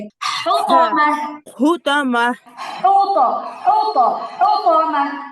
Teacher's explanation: বড় হা, এটা হা গলার মাঝখানে কণ্ঠনালীর মধ্যভাগ থেকে।